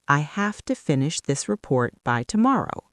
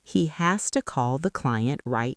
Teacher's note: Another incredibly common reduction happens with the words have to and has to. They become hafta and hasta.